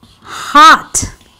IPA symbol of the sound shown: ɑ